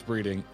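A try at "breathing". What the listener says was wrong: That sounded like you said breeding.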